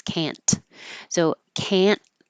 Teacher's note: You just don't release can't. So can't and hold it there.